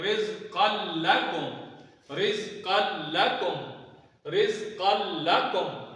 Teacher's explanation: غنہ نہیں کریں گے اور ملا کے پڑھیں گے